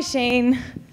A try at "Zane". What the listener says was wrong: It's Zane. The Z's not silent, and it's Z, like a